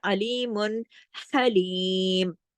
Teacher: ये अल्लाह की सिर्फ बयान हो रही, तारीफ है, अलीमुन हलीम, हाँ को गले से पढ़ना है, हरफे हल्की है, इसमें सांस चलती हुई महसूस होती